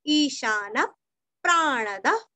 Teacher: विसर्ग का उच्चारण हल्का सा फ